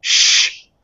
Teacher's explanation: sounds like fricatives like the th sound where you're not stopping the air but you're really getting in its way